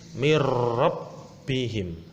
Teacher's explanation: Jadi nun sukun bertemu dengan huruf ro. Jadi nunnya itu dianggap tidak ada jika dibaca. Tulisannya min rabbihim. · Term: idgham bila gunah